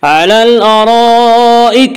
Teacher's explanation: الف لام اگر حروف قمری کے شروع میں ہوں تو صرف لام پڑھا جائے گا، الف کو نہ پڑھیں گے